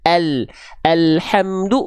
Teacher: dari tepi lidah depan kiri dan kanan menyusul sampai ke ujung lidahnya disentuhkan ke langit-langit bagian depan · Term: huruf lam